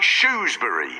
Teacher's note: I don't pronounce the r at all and say shury